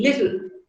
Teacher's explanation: In the second syllable, you have T and L. T and L are both consonants, but in this particular syllable, L has got a syllabic quality. It acts like the nucleus, and hence it is called a contoid.